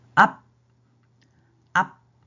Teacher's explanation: 입술에서 소리가 이미 막혀서 나갈 수가 없어요